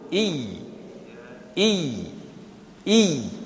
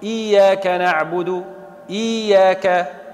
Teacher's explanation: لا، أضغمت الساكنة في المتحركة وأخذت حكم المتحركة وبقي الكسر مستقلا، فلذلك يلزمني ننطق بياء بكسرة، ثم بعد الكسرة بماذا أنطق؟ بياء ساكنة غير مادية. من أين تخرج؟ من وسط اللسان، يعني ما نقولش إي حرف مد، إي كسرة ممدودة، لا، خطأ، لازمني نقول إي إي إي. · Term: ياء مشددة